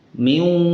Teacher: Wawnya tetap dibaca miu, masuk ke waw tapi disertai dengan gunnah